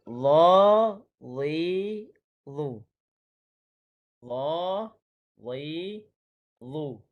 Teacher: Huruf dha ni ramai yang tertukar apabila dia tidak baca dengan tebal.